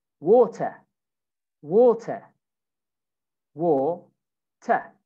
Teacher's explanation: So in British, we say water, water, water. You don't say the R, water.